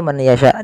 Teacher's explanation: ketiga-tiganya dibaca dengan sama, yaitu memasukkan nunnya kepada huruf ya, dan hukumnya yaitu idgham bi gunnah